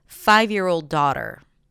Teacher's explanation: so now 'daughter' is the keyword, 'five' is the secondary stress